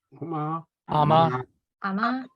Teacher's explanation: the important thing about saying ama was that the ma is your high tone, the first tone